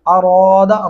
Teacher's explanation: را کو موٹا اور پر کر کے پڑھیں گے. اراد ایسے نہیں کرنا.